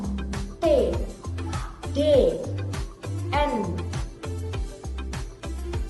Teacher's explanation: the dental Sounds our to has to touch the upper tip yaitu bunyi yang dihasilkan ketika lidah menyentuh gigi atas